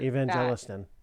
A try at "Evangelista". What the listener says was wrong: No, no, it's Evangelista. No N on the end. No N. No N.